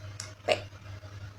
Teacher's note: huruf P ini kalau di konsonan dia bilabial stop atau bilabial seperti yang kita sebut di awal adalah kedua bibir yang saling bersentuhan dan stop itu berhenti kayak P.